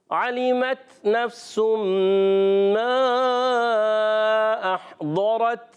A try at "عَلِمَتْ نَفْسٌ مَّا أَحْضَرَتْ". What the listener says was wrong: مد کو کھینچنا ہے. عَلِمَتْ نَفْسٌ مَّا أَحْضَرَتْ.